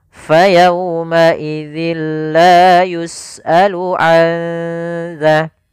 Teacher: Ee nun mati bertemu dengan zal yang mana zal termasuk huruf ikhfa. Maka suara nunnya samarkan ke makhraj huruf dalal. Maka anza sembari ditahan suara dengungannya sepanjang dua harakat. Maka cara membacanya yaitu tahan dulu.